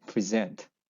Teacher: if it is a verb they would say present the second syllable stress